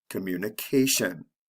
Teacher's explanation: with the t i o n the stress comes right before the ending so it's the second to the last syllable